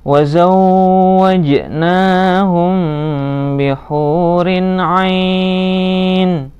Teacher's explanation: Matobi'i, rin kasrah tanwin bertemu dengan ain, bacaan idhar, harus jelas. Ain mat arid li sukun, ain dibaca panjang, nunnya disukunkan.